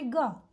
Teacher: આપણે ગ બોલીશું તો એ સામાન્ય રીતે ગ, એમાં વધારે હવા બહાર નથી નીકળતી. અને ગ જ્યારે થોડું એના ઉપર ભાર આપવો પડે છે એટલા માટે એને મહાપ્રાણ ધ્વનિ કહીશું.